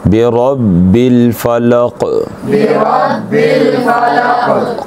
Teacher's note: حروف قلقلہ پانچ ہیں اور ان میں سے ایک حرف جو ہے وہ قلقلے والا قاف ہے، تو یہاں پہ قلقلہ کیا جائے گا